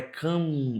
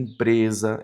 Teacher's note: a soma do A mais o M, eu vou ter um A nasalizado. Aí eu coloco o tio aqui para trazer a ideia da nasalização.